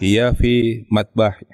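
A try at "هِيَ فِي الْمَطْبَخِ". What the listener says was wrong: Hiya fil matbahi. Alif lamnya dibaca. Coba diulangi sekali lagi.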